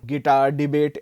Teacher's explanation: the iambic stress pattern basically having stress on the second syllable